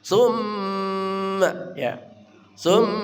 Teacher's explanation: tumma juga dengung gunah mim musyadadah tajibul gunah